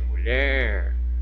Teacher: eu tenho mu, que é átona, e eu tenho ler, que é tônica, ou seja, eu pronuncio com mais intensidade, mulher, certo? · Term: sílaba tônica